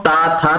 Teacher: तो आपकी जो जिह्वा होगी वह दांतों से टकराएगी